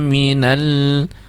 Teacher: lam sukun ditekan ya, ditekan membacanya, jadi jelas tekanannya